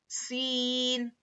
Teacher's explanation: سین میں ایک سیٹی جیسی آواز ہوں گی اور سین کو ہم سختی سے پڑھیں گے.